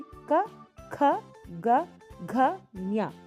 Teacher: ನಾವು ಉಚ್ಚರಿಸಬೇಕಾದ್ರೆ ಗಂಟಲಿನ ಸಹಾಯದಿಂದ ಉಚ್ಚರಿಸುತ್ತೇವೆ